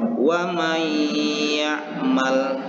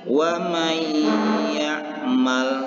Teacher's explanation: huruf Idgham Bighunnah Jadi bagaimana cara membaca Idgham Bighunnah ini yaitu memasukkan bunyi nun mati ini kepada huruf sesudahnya yaitu huruf ya dan membaca huruf ya ini seolah-olah bertasydid dan disertai dengan dengung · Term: idgham bi gunnah